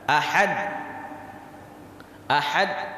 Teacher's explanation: Huruf dal itu makhrajnya dari ujung lidah kita kena dengan pangkal gigi seri kita.